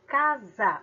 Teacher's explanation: o fonema o som da palavra é casa ou seja o s tem som de z